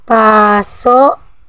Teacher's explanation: Sa pangalan pa lang nitong mabilis, ito ay binibigkas ng mabilis ngunit walang impit sa dulo. At ang sagisag ng diin nito ay palihis.